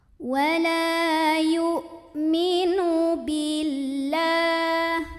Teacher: Bacanya panjang 2 harokat. Wala yu, ini hamzah suaranya tertahan, punya sifat namanya syiddah. Jadi jangan sampai ada pantulan ya, gak ada bunyi lain setelahnya.